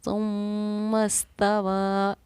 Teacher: जिस तरह नून पर तशदीद थी तो गुन्ना किया, इसी तरह यहाँ मीम पर तशदीद है तो गुन्ना किया